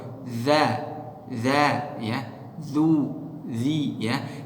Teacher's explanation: Makhraj dari huruf zal yakni dari tarful lisan ma'a atrafi ats-tsanaya al-ulya, dari ujung lidah menyentuh ujung gigi seri atas. Maka sedikit keluar lidah, keluar lidah kita, keluar za, zu, zi, Jadi pengucapan zal enggak boleh kita tebalkan.